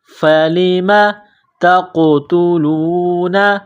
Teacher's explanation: تا ہے نقطہ والی تا، اس کو باریک کرنا ہے